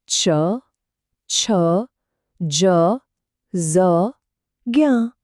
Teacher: આપણી જીભ તાળવાને અડે છે એટલે કે અવાજનું સ્થાન ગળામાંથી થોડું આગળ આવ્યું તાળવા પર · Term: ચ વર્ગ